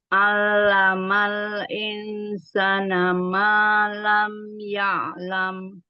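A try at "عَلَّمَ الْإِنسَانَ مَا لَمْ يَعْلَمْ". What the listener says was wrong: Naknya insanya panjang, Bun. Alamal insana ma.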